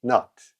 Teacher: Това т в края на над често не се произнася. Не изчезва напълно, но тръгваме да го произнасяме и не го довършваме.